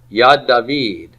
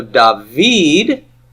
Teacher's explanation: it loses its stress surrenders it to the second now so dahveed the V part is tonic the da part is pre tonic